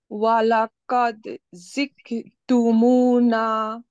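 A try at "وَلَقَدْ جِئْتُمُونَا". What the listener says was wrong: না, জিক ক হয়ে গেছে। জি জি জি, জি এর সাথে হর্ষই। আপনি যদি এরকম পড়তেন যে জি তারপরে হর্ষই, তাহলে কি হতো? জি না তো, বর্গীর জ্বর উচ্চারণ জি। জি জি তুমুনা। জিক না, জি। হর্ষইতে ধাক্কা হবে। জি তুমুনা, জি জি জি। হ্যাঁ, ক আনা যাবে না লাস্টে যেন। যেন ক যেন না হয়ে যায়।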